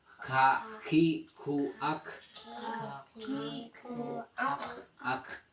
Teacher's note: Huruf kaf itu huruf hampir sama dengan seperti huruf qaf, sama seperti huruf qaf, namun pangkal lidahnya diturunkan.